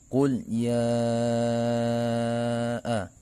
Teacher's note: أعوذ بالله من الشيطان الرجيم بسم الله الرحمن الرحيم قل يا أيها الكافرون قل lam sukun ini disebut dengan lam mutlak karena setelah lam sukun tidak menghadapi huruf lam atau ro, maka cara membunyikan huruf lam sukun tersebut dibaca dengan idhar atau dengan jelas